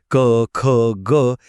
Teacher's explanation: त्या जागेलाच व्याकरणात उच्चार स्थाने असं म्हणतात. हे बघा क वर्गातले जे ध्वनी आहेत ना क, ख, ग हे थेट कंठातून येतात म्हणून त्यांना म्हणायचं कंठ.